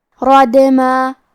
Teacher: دال پہ جزم ہے اور دال بھی حروف القلقلہ میں سے ہے تو ہم یہ حرف کو ہلاتے ہوئے یہ کلمہ کو پڑھیں گے